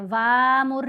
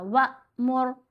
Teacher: वाव को हम हमज़ा साकिन से मिलाना है तो झटका देना है, वामुर नहीं करना, वअमुर।